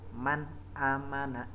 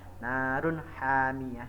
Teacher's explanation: Cara membacanya adalah nun mati atau tanwin harus dibaca jelas atau terang. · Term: idhar halki